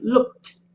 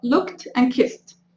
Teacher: Tenemos la ed y acá tenemos la pronunciación looked. Entonces no estamos pronunciando ni la E ni la D, sino que ese sonido de ed se convierte en un sonido de T